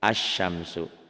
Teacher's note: Dengan kata lain, tulisannya ini bacanya lain tuh ya. Kan tulisannya ada al-syamsu, ada lamnya, dibacanya lamnya hilang